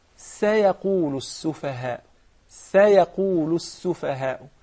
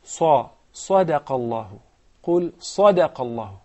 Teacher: So the Sin is very thin, while the Qaf, the Sad, the Ta, the Dha are very heavy and fat letters.